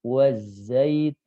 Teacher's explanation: ketika masuk ke nun, ini bibir sudah tidak manyun, ya, karena nun harokatnya bukan dhammah.